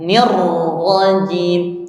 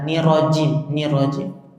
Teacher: Jadi ee kita baca tadi dengan ditekan digetarkan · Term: tasydid